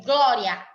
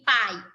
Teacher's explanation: veja que o A tem uma entonação mais forte do que o I